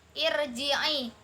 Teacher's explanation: Ro sukun didahului oleh kasroh, dibaca tarkik atau tipis.